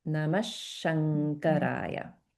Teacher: the visarga gets pronounced like a sh sound, and this anuswara is pronounced like nga because it's followed by the throat sound ka